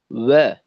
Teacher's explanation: তো এই ক্ষেত্রে কিন্তু ওয়াও এর মাখরাজ থেকে উচ্চারিত না হয় অ, এই ধরনের আওয়াজটা হয়, অ না, ওয়া, ওয়াও জবর ওয়া, আওয়াজটা ঠোঁটে রাখতে হবে